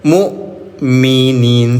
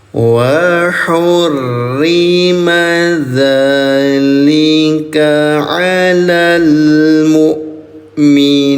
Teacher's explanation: hamzah sukun ini memiliki sifat yang namanya syiddah, tertahan suaranya, tertahan udaranya, sehingga nggak ada nafas yang mengalir. Mu tidak, tapi minin.